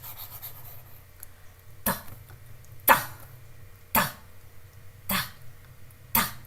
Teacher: It is a hard sound. So it is again aspirated.